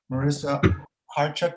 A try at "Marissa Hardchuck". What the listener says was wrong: the c is silent